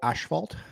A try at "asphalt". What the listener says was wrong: It's not asphalt. There's no H. Just saying.